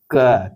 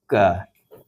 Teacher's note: अघोष, अल्पप्राण का उदाहरण कौन सा है? और इसका आंसर हो जाएगा क।